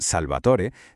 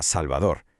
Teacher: En castellano, las consonantes como la t, cuando iban entre vocales, se suavizaron, se convirtieron en d. Por eso, del latín salvatore llegamos a salvador. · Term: la sonorización